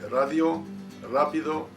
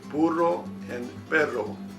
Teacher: the sound of the single R being smooth, like in the word radio, rápido, but the double R sounds very heavy, like in the word burro and perro.